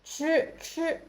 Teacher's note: 吃 is the aspirated sound with proof of air, 吃, with your tongue curled back.